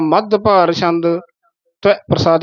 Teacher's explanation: ਮਧੂਭਾਰ ਨਹੀਂ ਕਹਿਣਾ ਦਦਾ ਨਹੀਂ ਬੋਲਣਾ